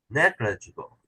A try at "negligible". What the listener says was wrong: Still a little too much emphasis on the glit. Make it come down. Negligible. Come back up with this third syllable. 1 up, 3 up, 2 down, 4 down.